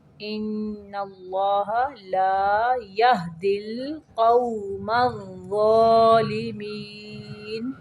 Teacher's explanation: فمن اظلم ممن افترى على الله كذبا ليضل الناس پھر سے دیکھیں علی اللہ کذبا لیضل الناس بغیر علم ان اللہ لا یہدی القوم الظالمین. ان اللہ ان پہ نون مشدد کا غنہ ہوگا اور اللہ کا لام موٹا پڑھیں گے